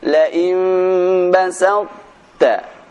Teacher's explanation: cara membaca huruf ta-nya ini tanpa dibaca qalqalah, namun tetap terbaca beberapa sifatnya.